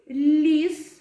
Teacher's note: коли ми вимовляємо звук л нам створює перешкоду язик і зуби